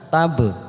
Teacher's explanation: ada huruf ba sukun, namanya bacaan qalqalah sugro kita pantulkan